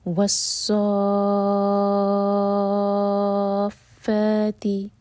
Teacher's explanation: پہلا ورڈ ہے والصافات، تو یہاں پہ صا ہم 6 حرکہ لمبا کھینچیں گے، یہ ہے مد لازم کلمی مثقل، کلمی یعنی کہ ورڈ کے اندر، ورڈ کے میں یہ مد آ رہا ہے اور مد کے بعد ہے شدہ، تو اس لیے مثقل. · تو سو ہم چیر کا لمبا کھینچیں گے اور پھر فا سے جوڑیں گے، تو یہ بنے گا والصافاتی. تو فا دو حرکہ لمبا مد طبعی